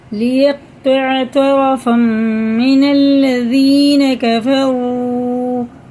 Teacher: یہ حرف مدہ ہیں اور یہ 3 الف کے برابر ہمیں کھینچ کے پڑھنا ہے